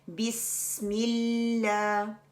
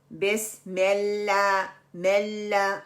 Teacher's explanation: तीसरी गलती जो हम करते हैं शद की नामुकम्मल अदायगी और लफ्ज़ अल्लाह के लाम को मोटा पढ़ देते हैं, बिस्मिल्लाह मिल्ला, हम पीछे से ज़बान को उठाते हैं, जबकि लाइट लाम के लिए हमने ज़बान का जो नोक है वो सिर्फ उठानी है और वो सामने वाले गम्स को लगानी है